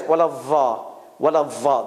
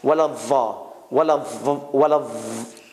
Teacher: And Iraqis, many of them, they say it like this. Wala va, wala va. The tongue is out.